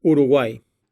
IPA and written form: uɾuˈɡwai (Uruguay)